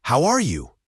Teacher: In fast speech, how are you often becomes how are ya, or even how ya. The R is often reduced.